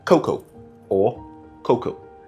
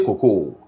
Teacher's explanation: So the stress is on the first, not the second syllable.